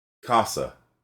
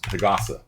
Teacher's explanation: You see with the K, the air's coming out. With the G, it's not.